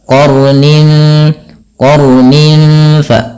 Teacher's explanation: Sekali saja untuk sifat takrir daripada huruf ra dan dia menebal.